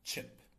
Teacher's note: Affricates would be a combination of stops and fricatives. So here we would have a stop followed by a fricative, as in the ch sound in chip.